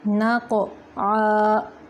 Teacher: قاف کلکلا ہے اور پر بھی ہے